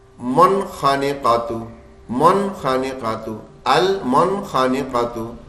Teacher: بالکل نون صاف صاف پڑھنا ہے, غنہ بننے نہیں دینا